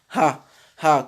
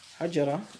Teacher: le grand ha et la lettre hamza qui sont prononcés tout au fond de la gorge. C'est le ha qui correspond en français au ha, au h que nous connaissons.